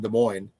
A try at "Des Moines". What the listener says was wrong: It's Des Moines. The S is silent.